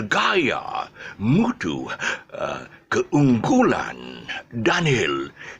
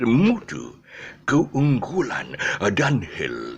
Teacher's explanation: He had his airy, very breathy voice.